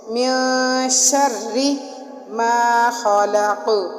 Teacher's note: جب را کے نیچے زیر ہوگی تو اس را کو ہم باریک پڑھیں گے